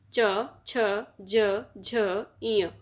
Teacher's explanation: यह पांच वर्ण तालु से बोले जाते हैं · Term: च वर्ग